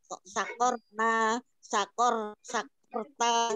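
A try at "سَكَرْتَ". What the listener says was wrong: Bukan pakai kok, pakai kap, sakarta.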